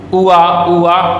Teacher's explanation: जैसे यावा को अर्धस्वर क्यों कहा जाता, अगर इसको हम यण संधि के आधार पर तोड़ते हैं तो ई और आ पे टूटता, वा को तोड़ते हो तो ऊ और आ पे टूटता है। आप जरा इसका उच्चारण करो, ईया ईया ईया, या निकल के आता, उआ उआ, वा निकल के आता।